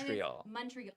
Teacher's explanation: The stress is on the last syllable.